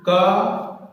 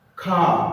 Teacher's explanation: खा को बोलने पर हमारे मुख से वायु ज्यादा निकली। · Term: महाप्राण